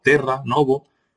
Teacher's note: Un sistema vocálico en el que se distinguen entre una O abierta y una O cerrada, y entre una E cerrada y una E abierta, la E y la O, abierta y cerrada. No se diptonga la E y la O